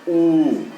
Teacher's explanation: भाषा विज्ञान की दृष्टि से उ के उच्चारण में जीव का पश्च भाग काम करता है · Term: पश्च स्वर